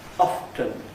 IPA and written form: ˋɒftn̩ (often)